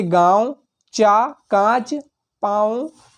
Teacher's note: मुख से अधिक और नाक से कम ध्वनि निकलती है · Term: अनुनासिक